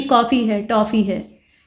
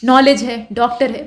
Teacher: आ के समान नहीं होता है और ओ के समान भी नहीं होता है, मतलब इसमें ओ और आ दोनों का मिक्सचर होता है, कुछ बीच की चीज़ होती है, तो ये कुछ ऐसा होता है, बिना बिंदी का चांद, ठीक।